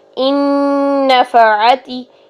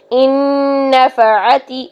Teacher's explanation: نون کی آواز نون کے اندر مرج ہوئی، 2 حرکات جتنا غنہ کیا